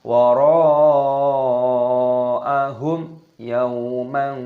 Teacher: Wara'a, mad wajib muttasil panjangkan 6 ketukan. Wara'ahum, mim sukun bertemu dengan ya, hukumnya dibaca idhar syafawi, dibaca jelas, jangan didengungkan. Wara'ahum yau, tidak boleh.